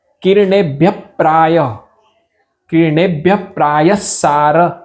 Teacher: વચ્ચે વિસર્ગ આવશે ને એનું પૂરું ઉચ્ચારણ નહી થાય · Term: અડધા વિસર્ગ